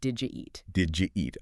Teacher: The D and the Y making a J sound.